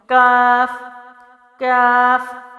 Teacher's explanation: زبان قاف کی جگہ سے ذرا منہ کی جانب تالو پر لگانا ہے، یعنی آگے کر کے، اور اس کی آواز جو ہے باریک ہے، تو آواز کیا ہوگی، کاف کاف۔